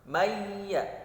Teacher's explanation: tulisannya man yaqulu tetapi dibacanya mayyaqulu, maka ditahan 2 harokat. Mayya, nun sukun bertemu huruf ya, maka hukumnya adalah idgham bi gunnah yang tadi 4 ya.